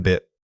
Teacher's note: Keep the vowel short and tight.